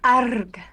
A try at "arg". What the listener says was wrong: No, no, no. No, you're rolling the R's. It's not Spanish. No, it's arg. No. No, it's not the 2 R's. It's just like it's like 6 R's. Arr. Like a pirate.